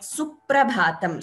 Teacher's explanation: So here, though we do not have it is not su, p and pra, we do not have another p here, but when we chant or when we read, we chant it as suprabhatam with an other, with some stress before the pra. Before pra you get a stress, it is heard as a double p there, that is dvitvam, like suprabhatam.